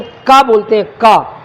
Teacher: जब हम का बोलते हैं का, तो हमारी जो जिह्वा मूल है, जीव का जो मूल भाग है कंठ में, वो थोड़ा सा कंठ में चिपक जाता है